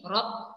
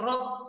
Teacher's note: Naik sedikit ke atas makhrajnya, okey, bertemu dengan langit-langit bahagian atas. Dan juga huruf ra ni bila kita ni menyebut huruf ra, ada getaran di hujung lidah kita ni.